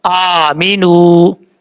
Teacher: اس کے بعد ہے آمینو، حمزہ کے اوپر کھڑا زبر ہے، ایک الف کی مقدار لمبا کر کے پڑھیں گے، میم زیر می، نون واو پیش نو، آمینو، نون کے بعد جو واو ہے یہ واو مدہ ہے، اس کو بھی ایک الف کی مقدار لمبا کر کے پڑھا جائے گا